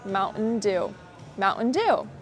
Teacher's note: Notice how I pronounce the word mountain, because this is a glottal stop, so you do not pronounce the T in the glottal stop.